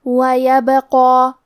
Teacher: قاف کی ادائیگی زبان کی جڑ اور تالو کے نرم حصے سے ہے · کلمت وَيَبْقَى میں حرف البا پہ جزم ہے، لہذا ہمیں با کو قلقلہ سے پڑھنا ہے، اور قلقلہ کا معنی ہے حرف ساکن کو ہلانا. تو ہم با کو ہلاتے ہوئے یہ کلمہ کو پڑھیں گے